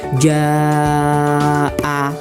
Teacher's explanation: Panjangnya 2,5 alif atau 5 harokat. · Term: mat wajib mutasil